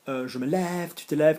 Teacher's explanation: when it's the last syllable, je me lève, tu te lèves, we would change the sound to an eh sound